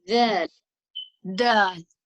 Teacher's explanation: the difference is that you will feel vibrations in your vocal cord.